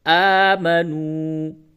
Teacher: یہ واو مدہ ہے، تھوڑا سا کھینچ کے پڑھیے